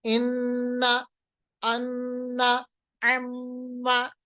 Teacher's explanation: ये जो नाक में वो आवाज दे जाते हैं इसको हम कहते हैं घुन्ना · गैन, नून और हा, ये गुना नहीं है, ये गुन्ना है। गुन्ना यानी नाक के बासे में आवाज को रखना